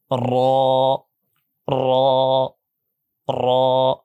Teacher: কিন্তু র যখন আপনি একটু মোটা করতে যাবেন, র তখন কিছু বাতাস বের হচ্ছে, কিছু বাতাস বের হচ্ছে না, মনে হবে যে এরকম শুনতে মোটা মোটা গম্ভীর গম্ভীর লাগবে সাউন্ডটা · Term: মোটা হরফ